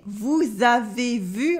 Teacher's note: Here we have une liaison between vous and avez.